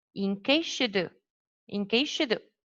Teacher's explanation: So you omit this last voiceless fricative sound and join the following word, yeah, this verb joined to the previous word.